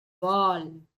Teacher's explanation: you are gliding your tongue from the middle of the palate in order to pronounce this L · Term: Vatralla